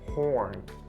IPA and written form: hɔːrn (horn)